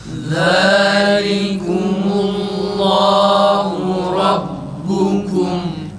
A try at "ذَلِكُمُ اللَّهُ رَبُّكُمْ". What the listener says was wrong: Allah lafzındaki ha'nın ötresi u çıksın, güzel çıksın arkadaşlar. Ü gibi garip bir şekilde çıkıyor.